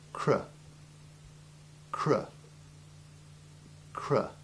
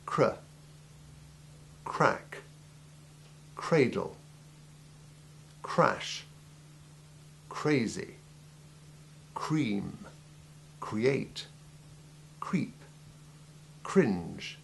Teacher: It feels almost as if your jaw is trying to make a circular movement. The R sound must flow nicely from the C sound without interruption. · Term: cr sound